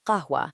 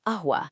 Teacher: But if you use the Hamza trick, you seamlessly transform it into ahwa, just completely dropping the Q and starting with a crisp little glottal stop